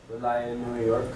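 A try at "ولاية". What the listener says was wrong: Wilayat. Wilayat, New York. So we want to hear that t in there. Like we were doing Medina, Austin, Medina, Dallas.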